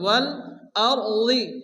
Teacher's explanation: রাস ডান দিকে জবর, রাকে পুরো মোটা করে উচ্চ করে পড়তে হবে।